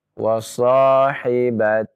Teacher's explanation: Hi-nya itu dipanjangkan ya. 2 harokat.